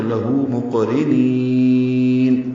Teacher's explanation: جب اس پر وقف کرتے ہیں تو لہو مقرنین، یہ نون لمبا ہو جاتا ہے